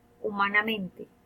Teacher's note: Son sonidos oronasales. Es decir, hay, de alguna manera, el aire que sale tanto por la boca como por la nariz